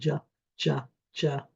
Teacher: Where does the sound start? Well, it starts up by the alveolar ridge, and then it glides down. The jaw drops and glides it down.